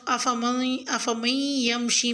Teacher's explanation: آیت نمبر 22 میں لفظ افمن یمشی میں یائے مشدد پر غنہ یعنی ادغام کریں